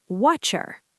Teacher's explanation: >> Exactly, but I'm saying, "What do you want?" What do you becomes what cha because in British English, when a T meets a Y like in what you, it often turns into a cha sound